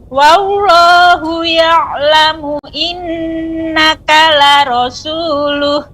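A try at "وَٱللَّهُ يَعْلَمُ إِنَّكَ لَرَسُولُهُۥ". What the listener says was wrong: Tajamkan sinnya Ibu. La rasul. Wallahu ya'lamu innaka la rasuluh. Sinnya ditajamkan.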